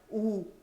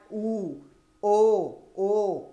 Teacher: जिसका उच्चारण करते हैं तो होठों का आकार गोल हो जाता है, वो होता है वृत्ताकार।